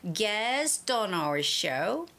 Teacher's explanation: I was still like holding on to the sound and made it link between T and O.